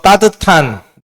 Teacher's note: 시옷이 디귿이 됩니다. 디귿 뒤에 히이 합쳐져요. 그래서 따뜻한 예, 그러면 교체 축약.